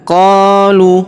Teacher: huruf qo kita panjangkan dua harakat karena di depannya terdapat alif yang ini. Qolud de.